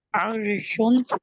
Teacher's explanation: یہ را ساکن سے پہلے زبر آ جائے تو را کو پور پڑھتے ہیں